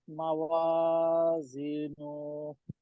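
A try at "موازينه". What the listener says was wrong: নুনে টান নাই তো,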